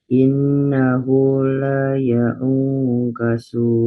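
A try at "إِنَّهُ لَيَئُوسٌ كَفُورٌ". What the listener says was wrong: Ya, jangan ketarik panjang, pendek ya-nya.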